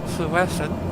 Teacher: the Welsh double L is, instead of a L, it's an unvoiced L. Which is not a sound that appears in English.